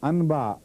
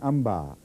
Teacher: اس لیے میں آپ کو سمجھا رہا ہوں، قرآن کریم پڑھتے وقت جب بھی نون ساکن ہو اور میم بعد میں آئے تو اس کو کلیتاً میم میں بدل دینا ہے نون کو. اور اگر بے آ جائے تو نون غنہ اور میم مل جاتے ہیں.